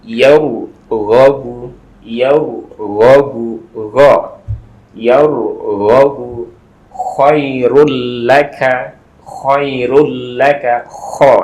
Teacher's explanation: Kemudian yang gha dan kha itu adalah di ujung tenggorokan